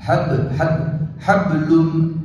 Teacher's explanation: ஹப் என்று சொல்லும்போது கல்கலா, அதாவது அந்த பாவுக்கு மேல சுக்குன்றது